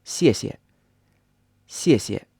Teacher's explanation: second syllable you don't stress at all